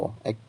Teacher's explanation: কম্পোজ্জাত ধ্বনি হচ্ছে একটি র। এই ধ্বনি উচ্চারণে জিহ্বার অগ্রভাগকে কম্পিত করে, অর্থাৎ তা দ্বারা দন্তমূলকে একাধিকবার দ্রুত আঘাত করে উচ্চারিত হয়